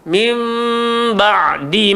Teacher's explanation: atas nun ada tanda mim menunjukkan iqlab. Rapatkanlah bibir tapi tak terlalu menekan.